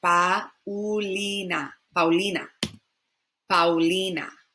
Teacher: pa ulina paulina paulina i've exaggerated the double o here but the a and the u just kind of flow together